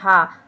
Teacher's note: हा हमारा काकल्य भी है और संघर्षी व्यंजन भी है